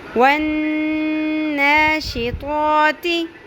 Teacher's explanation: یعنی نون کی آواز کو ہم لمبا کریں گے، کھینچیں گے، ناک کی ہڈی میں تھوڑی دیر کے لیے ٹھہرائیں گے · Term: غنہ